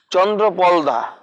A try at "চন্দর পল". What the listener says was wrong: চন্দ্র না, চন্দর, চন্দর পল।